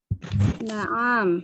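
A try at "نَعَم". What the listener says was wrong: Kok bacanya na'am? na'am. Pendek ibu-ibu.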